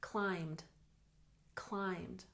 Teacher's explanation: climbed just one syllable even though it has Ed on the end